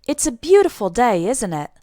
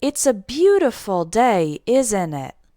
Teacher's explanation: Notice my intonation. It doesn't go up at the end, it goes down. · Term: intonation goes down